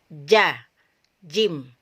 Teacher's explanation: Suaranya tertahan, terputus, tidak bocor ya. Jadi ketika kita mengucapkan huruf ja atau jim, itu nafasnya, nafas kita dan suara kita tertahan, terputus, tidak bocor atau tidak mengalir. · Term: syiddah